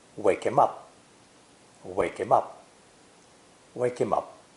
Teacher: the pronoun him is usually unstressed and pronounced without the H sound. So, in this sentence, the three words wake him up are linked together.